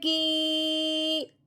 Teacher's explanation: وہ زیر والے حرف کو اس یا ساکن کے ساتھ ملانا ہے اور ساتھ ساتھ ایک الف کے برابر لمبا بھی کرنا ہے، ساتھ ساتھ ایک الف کے برابر لمبا بھی کرنا ہے۔